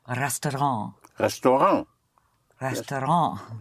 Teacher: you don't sound the T. So again, the consonant at the end of a word in French is not sounded unless it is followed by an E.